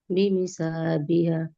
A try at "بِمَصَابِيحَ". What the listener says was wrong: بیمی نہیں ہے، بیما صابیح، صابیح، بی پہ ٹائم لگائیں پلیز کیونکہ مد اصلی ہے،